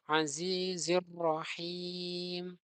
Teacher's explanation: Perhatikan biasanya ro bertasydid ataupun huruf yang lain ketika ditasydid itu kebanyakan tidak diperhatikan. Padahal ro di sini ketika bertasydid itu hakikatnya ro-nya ini ada dua. Kemudian selanjutnya ar-rohimi ini adalah mad ketika dia dibaca pada akhir kata maka panjangnya lebih dari dua ketukan.